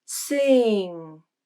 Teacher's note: the vowel begins as i but then the tongue moves up as you progress to the nasal consonant